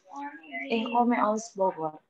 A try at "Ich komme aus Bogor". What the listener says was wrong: Ich komme. Jadi bukan komme, agak ke e. Ich komme aus Bogor.